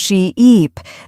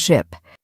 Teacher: The difference is in how long you hold the vowel sound